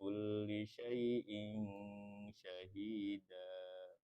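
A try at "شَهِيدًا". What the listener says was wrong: Syahida, tapi syahida. Karena dia dikit syahida. Karena tuh. Jadi pas mau ke dalnya, harusnya kan nggak boleh diancang-ancangin kan. Syahida, kalau syahida. Karena ngayun dikit dia kena sedikit.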